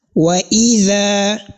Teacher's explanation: al-mad al-asli, which has a duration of only 1 second, that is 2 haraka.